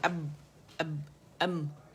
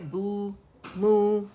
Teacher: با میں نے ادا کیا فلیٹ لپس کے ساتھ